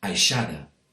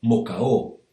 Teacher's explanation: you will often hear people not pronouncing the d sound in words that end in ada or ador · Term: dropping of the D